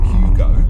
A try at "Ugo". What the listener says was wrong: It's the silent H. Don't pronounce the letters.